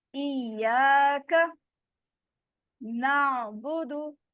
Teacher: यहाँ पर आइन के मखरज का आपने ध्यान रखना है, इसमें झटका नहीं आना चाहिए। आइन की आवाज जो है वो चलती रहती है, वो ब्रेक नहीं होती। ठीक है, अगर आप ब्रेक करेंगे तो झटके की तरह की साउंड आएगी।